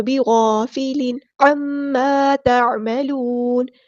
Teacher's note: یہاں پہ تنوین کی آواز کو ہم ظاہر کریں گے کیونکہ آگے ہمارے پاس حروف ہلکی میں سے عین آ رہا